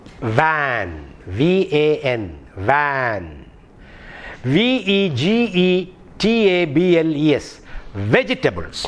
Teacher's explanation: The problem with the V sound is that because of our mother tongue influence, we don't differentiate between the sound produced by the sound produced when we use the alphabet W and when we use the V sound. Actually, V, which you have in van and vegetable, is a labiodental sound. Labiodental means when you produce the sound V, the upper set of teeth should touch the lower lip.